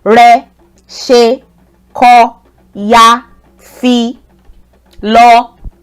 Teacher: It's not too low and it's not too high. It aligns with the middle tone. · They're on the same level tone-wise. They all have the re tone. So you notice that there are no tone marks on them.